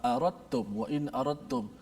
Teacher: Tak ada pun huruf dal kat situ, tak bunyi pun dari sudut sebutan huruf dal, tapi dekat tulisan ada huruf dal. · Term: idgham mutajanisain